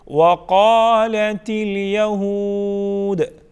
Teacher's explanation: قاف کو پر پڑھا جائے گا، الف مدہ ہے، اس کو ایک الف کے برابر کھینچ کے پڑھیں گے، تا کو بالکل باریک پڑھیں گے · پھر دال کو بالکل ساکن بنائیں گے، اس کی جو حرکت ہے اس کو ہم سکپ کریں گے